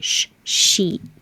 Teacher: Sheet is the constant airflow, so you don't want to stop the airflow. Shh, it's like shh, sheet.